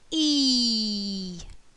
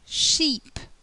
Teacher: the mouth is closed the lips are spread and the tongue is at the front of the mouth